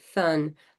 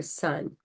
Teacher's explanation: they have the frontal lisp where they say thun for sun